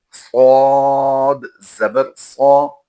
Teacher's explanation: صاد حروف مستعلیہ سے ہے تو یہاں پر اس کی ادائیگی پر کریں گے